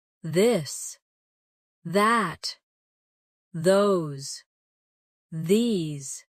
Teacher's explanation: Now practice the softer version of th where you let your tongue touch your teeth lightly but use your voice